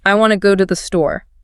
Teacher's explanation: The tothe becomes this tiny little blip between the big important words go and store.